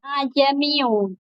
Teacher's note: Jadi hamzahnya itu tidak kelihatan, seperti seakan-akan langsung ke selanjutnya. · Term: Tashil